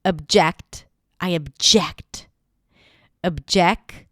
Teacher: it has a fun little schwa at the beginning, even though it's spelled with an O.